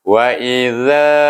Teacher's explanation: zal ini dia bunyi belakang hujung lidah bertentangan dengan gigi kacip keluarnya